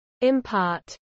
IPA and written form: ɪmˈpɑːt (impart)